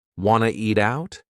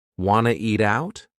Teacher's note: we have reduced want to become wanna.